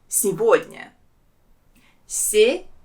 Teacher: There are also 3 syllables in this word, and the second one is stressed. And here the main thing is that the letter G, we pronounce it as V.